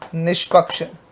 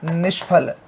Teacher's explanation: तो ऐसी स्थिति में जो आपका विसर्ग है वो बदलेगा मूर्धन्य श में